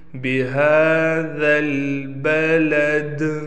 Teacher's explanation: لا اقسم بہذا البلد، ہا پر کڑا زبر ہونے کی وجہ سے ہا کو 1 الف کے مقدار کھینچ کر پڑھیں گے، اور آخر میں دال ہے، دال وقف میں ساکن ہونے کی وجہ سے دال پر قلقلہ ہوگا۔